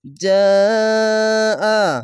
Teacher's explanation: এখানে 4 আলিফ টেনে পড়তে হবে, মাদ্দে লাজিম। জিম আলি জবর জা, হামজা জবর আ, জাআ।